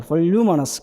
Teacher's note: 루에 여기에 강세가 주어진단 말이에요. 그러니까 스트레스 레벨 안에 위치하게 되는 거죠.